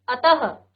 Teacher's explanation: विसर्ग क्या हो जाते हैं? विसर्ग इस ध्वनि का उच्चारण ह के समान, आधा ह